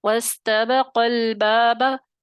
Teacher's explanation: الف مدہ گر گیا، حذف ہو گیا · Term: حذف کا قاعدہ